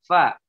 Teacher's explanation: Fa itu di bibir. Fa, ya. Bibir bawah dengan ujung gigi seri atas.